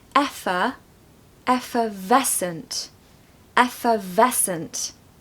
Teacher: A pronunciation tip for this one is that we need to stress the middle syllable. So effervescent.